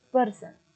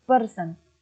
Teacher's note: Per diberi tekanan lebih tinggi